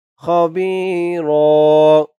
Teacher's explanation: কানা বিমা তা'মালুনা খবীরা খ বি বি একা লিফ টান খবীর ওয়াকফ করার কারণে দুই জবর থেকে এক জবর বাদ হয়েছে এক জবর দিয়ে একা লিফ টান দিয়ে পড়া হয়েছে